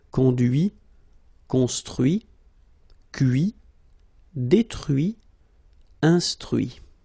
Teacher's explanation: you can notice that even if I put this final T, so as usual, I don't pronounce it